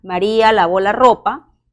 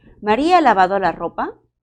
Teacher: ejemplo maría lavo la ropa mi tono final ha descendido pero si quiero transmitir esta idea a forma de pregunta mi tono va a subir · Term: tono ascendente